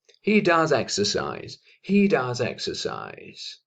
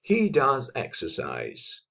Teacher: La S se conecta con la E, consonante vocal